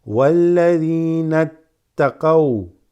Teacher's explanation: This na joins straight with the ta. This drops.